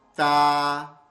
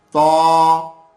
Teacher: تا کہتے وقت منہ کو کھول دینا ہے، ذرا پھیلا دینا ہے آواز کو فوراً باہر، اور تو کہتے وقت منہ کو گول کر دینا ہے اور آواز کو تھوڑی دیر منہ میں ہی روکنا ہے. وہ موٹا ہو جائے گا، یہ باریک ہو جائے گا.